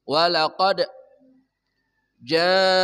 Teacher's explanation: qalqalah sughro memantul dengan kuat. Huruf qalqalah itu termasuk huruf qawi, huruf kuat.